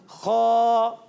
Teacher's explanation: حلق کا اوپر والا حصہ, جو حلق کا اوپر والا حصہ ہے, اس پر تھوڑی محنت کریں گے, زبان کی جڑ ہماری جو ہے وہ اوپر کی طرف جائے گی